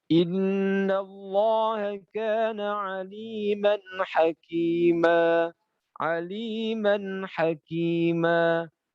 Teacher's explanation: Mad Iwat di baca dua harakat Harus baca dua harakat jangan sampai Mad Iwat dibaca lebih dari dua harakat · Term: mat iwad